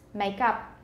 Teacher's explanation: it's probably going to be a wedge because it's stress